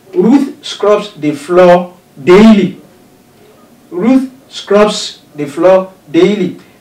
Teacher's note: daily is the word in the sentence that is emphatically stressed